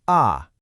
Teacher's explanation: sharp, quick drop from high to low, like you're giving a command